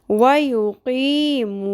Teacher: दोनों मद्दे असली हैं, क़ी मू, दोनों को एक जितना लंबा खींचे